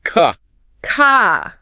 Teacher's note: in British English, that R at the end of the word often softens or disappears completely. So, car becomes more like ca car. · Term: the R sound